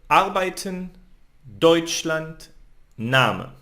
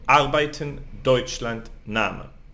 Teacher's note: lift my voice in the first syllable